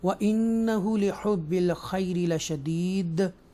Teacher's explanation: व इन्ना extra stress के साथ हम इसको अदा करेंगे, ठीक है। हु थोड़ा सा खींचेंगे, हुब्बिल खैर ये या लीन में से है और ये या मद्दा में से है, और बेशक वो माल की मोहब्बत में बहुत सख्त है।